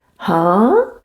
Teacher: when you raise your pitch to show confusion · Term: second tone